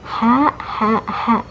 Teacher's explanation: keluar dari tenggorokan bagian tengah